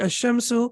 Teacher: So as we can see here, the lam is not pronounced, and the correct pronunciation will be ash-shamsu